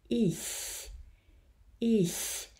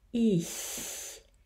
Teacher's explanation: the vowel that precedes ch when we have a word like ich or mich, dich, any of these sounds, is actually a vowel that is in between closed I and open I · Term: hybrid vowel